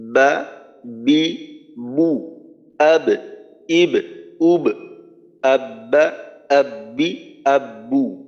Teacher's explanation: তো বা হলো শক্তিশালী হরফ, এখানে তিনটা সিফত শক্তিশালী: জাহার, সিদ্ধা এবং কলকলা। বাতাস বন্ধ, আওয়াজ বন্ধ এবং ধাক্কা দিয়ে উচ্চারণ করতে হবে যখন জজম থাকবে। আর দুইটা সিফত দুর্বল: ইস্তিফাল এবং ইনফিতাহ। · দুই ঠোঁটের ভিজা জায়গা থেকে বা উচ্চারিত হয়। তো বা হলো শক্তিশালী হরফ, এখানে তিনটা সিফত শক্তিশালী: জাহার, সিদ্ধা এবং কলকলা।